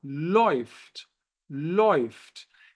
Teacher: No alemão, o A com trema seguido de U forma o ditongo OI, como se fosse um O seguido de I.